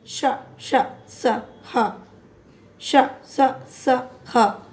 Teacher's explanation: जिन वर्णों का उच्चारण करते वक्त श्वास की मात्रा ज़्यादा से ज़्यादा निकले, यानी ऊष्मा निकले, गर्म वायु बाहर निकलती है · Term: ऊष्म व्यंजन